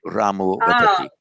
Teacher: Putra Vedanti. Whereas if it's the short ah, then the entire thing, the ah changes to o